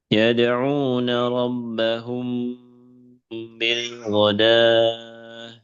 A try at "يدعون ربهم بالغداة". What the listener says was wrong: ya jadi bukan godawah tapi godah ya, kalau di mushaf Timur Tengah seperti ini ciri-cirinya jadi kadang ada di atasnya ya ya alifnya itu di atasnya ya kadang ada di atasnya wawu. Itu hanya numpang saja ya, bukan huruf wawu, tapi ini alif.